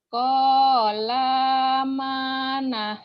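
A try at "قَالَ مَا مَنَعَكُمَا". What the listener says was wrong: La-nya pendek.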